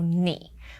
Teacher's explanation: Now notice that I paused after 你. So 你 is still the third tone because the person asking the question is a bit hesitant.